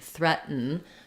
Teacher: it has a stop T and then a syllabic n